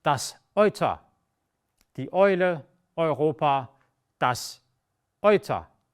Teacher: Another combination, another diphthong, is E and U, also E und U, which almost exclusively is pronounced Oi.